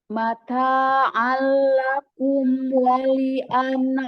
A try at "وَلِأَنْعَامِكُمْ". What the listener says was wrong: Jangan kum ya, bukan ku. Mata'an lakum wali an'amikum. Amikum. Ainnya bersihkan dari suara hidung nih.